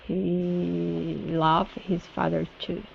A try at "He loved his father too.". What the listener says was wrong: Okay, instead of loved. So you've been saying an ah sound, saying he loved, loved. He loved his father too.